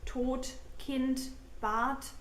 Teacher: German D is often pronounced as T as well.